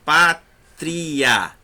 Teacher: terminando com o A sai mais aberto, mais livre. Então, o som é mais forte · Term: ditongo crescente